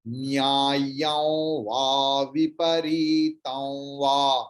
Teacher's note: অনুস্বরের উচ্চারণ এরকম হচ্ছে কেন? না, অনুস্বরের পরে ও আছে, তাই অনুস্বরের উচ্চারণটা যেন ও এরকম উচ্চারণ হচ্ছে